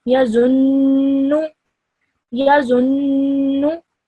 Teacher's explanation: holding the noon sound in my nose for around 2 seconds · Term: ghunna sound